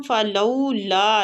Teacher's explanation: لو کو تھوڑا سا کھینچیں گے، وولین ہو رہی ہے